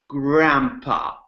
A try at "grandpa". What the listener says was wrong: Hold the R longer. Okay, so what you're doing by doing this exercise, you're strengthening that R sound. So watch out for that GR.